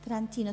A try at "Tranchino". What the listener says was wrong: Tranquino. Se escribe Tranchino, se pronuncia Tranquino. Exacto.